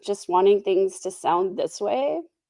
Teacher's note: she does a lot of vocal fry at the end of her sentences